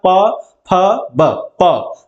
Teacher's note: जब प बोलोगे ना तो देखिए मुंह बंद हो जाता है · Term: ओष्ठ